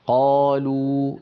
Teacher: الواو كما تكلمنا عنها قبل الفاصل قلنا بأنها تخرج بانضمام الشفتين إلى الأمام، هكذا مثلا قو، قالوا، لا بد من انضمام الشفتين إلى الأمام، ويصاحب ذلك ارتفاع لأقصى اللسان قالوا لابد من ارتفاع أقصى اللسان، وإلا لا تخرج الواو بصوتها العربي المعروف. ويصاحب ذلك أيضا اهتزاز للوترين الصوتيين.